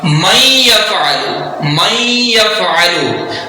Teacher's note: اب نون کو ہم نے یا میں مدغم کر دیا غنے کے ساتھ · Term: ادغام یرملون